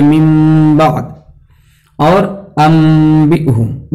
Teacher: तो इक़लाब और कल्ब में इस्तिलाही एतबार से कोई फर्क नहीं है, क्योंकि इक़लाब का मतलब भी वही होता है कि नून साकिन को या तनवीन को मीम साकिन से बदल कर पढ़ना